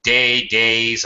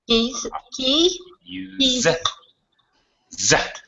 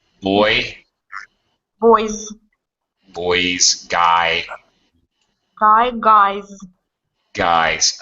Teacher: a vowel sound is a voice sound that means it's going to get Z pronunciation